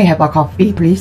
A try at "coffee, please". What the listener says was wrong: Have a. Have a. V 사운드가 조금 부를게요. 그러고 나니까 또 F 발음 놓치시네요. 천천히, 천천히 하셔야 돼요. 빨리 하면은 지금 훈련이 안 된 상태에서 빨리 하면 놓칠 수가 없어요. 천천히.